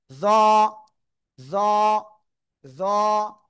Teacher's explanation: এটা কিন্তু জাল নয়, এটা হবে জ। মোটা আওয়াজে এক আলিফ টানিয়া উচ্চারণ করব